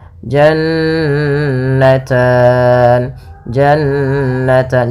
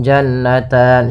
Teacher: bacaan gunah yaitu suara nunnya ditahan dua harakat